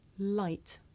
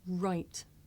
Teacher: I make the l sound with the front part of my tongue behind my teeth, and I make the r sound by making my lips come out and pulling my tongue back.